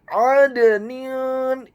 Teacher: huruf dalnya dibaca sukun tipis atau tarqiq dan wajib untuk diqalqalakan atau dipantulkan